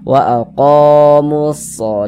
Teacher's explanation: Jadi kalau ada huruf alif, jadi kalau ada huruf alif sebelum alif ada ini harakat fathah nih ada tanda baca fathah. Maka huruf yang memiliki tanda baca fathah dibaca panjang sehingganya qo dibaca panjang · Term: Mad thobi'i